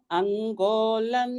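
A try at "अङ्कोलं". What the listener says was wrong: Bhagini, the first word I slightly heard a g pronunciation. Ankolam. It is Ankolam.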